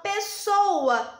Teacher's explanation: quando eu falo pessoa sai o som só de um s